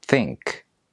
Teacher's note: But if you’re learning English as a second language or a foreign language, knowing this symbol is very useful because it tells you when you make the th sound, the tip of your tongue lightly touches the upper front teeth and you blow air out without vibrating your vocal cords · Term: voiceless dental fricative